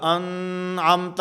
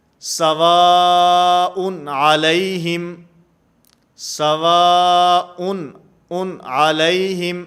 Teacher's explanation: غنہ نہیں ہوگا، آواز ناک کے اندر نہیں جائے گی، بلکہ اس کو واضح کر کے ظاہر کر کے پڑھا جائے گا